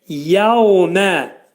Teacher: burada vəf hərfi dodaqlar qönçələnir, ə deyirik. Yevmə, diftong.